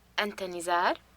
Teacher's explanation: she uses a rising intonation to make a question without changing the form or order of the words